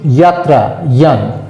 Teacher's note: অন্তঃস্থ জয়ের উচ্চারণ তো মানে বর্গীয় জয়ের মতো নয়, অন্তঃস্থ ইয়র মতন